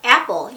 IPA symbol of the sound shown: æ